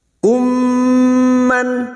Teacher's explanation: Memasukkan atau mentasdidkan 2 mim, bertemunya mim sukun dengan mim, memasukkan bunyi mim sukun kepada mim berikutnya, disertai mendengung selama 3 harokat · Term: idgham mimi